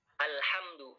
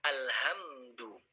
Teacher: Begitu juga alhamdu dengan ha, bukan dengan ha. Ha yang keluar dari tengah-tengah, bukan ha yang keluar dari bagian paling bawah.